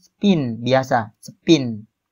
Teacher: jika sebelum P itu ada huruf s maka di situ tidak diletupkan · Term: unaspirated